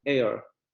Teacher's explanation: Tenemos el segundo diptongo, que sería con la vocal semicerrada anterior no labializada y luego la vocal central